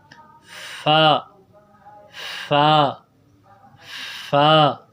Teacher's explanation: فا کی ادائیگی میں یہ ہے کہ اوپر والے دانت جو ہے ہونٹ کے تر حصے سے نکلے تو وہاں سے فا نکلتا ہے